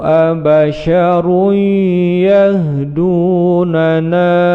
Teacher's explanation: idgham bigunnah, ditekan panjang 2 ketukan